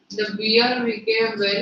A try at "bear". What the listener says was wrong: Bear, not beer, bear.